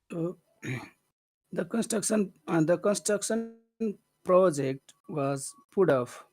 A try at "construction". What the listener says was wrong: Okay, is it construction or is it construction? If you say construction, it's almost like there's no it's like you're not giving any emphasis to any of the syllables, but there's at least one where you have to pay attention to it. Construction.